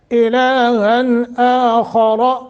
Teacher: نون تنوین کے بعد حروف حلقی میں سے حمزہ ہے، اظہار کر کے پڑھیں گے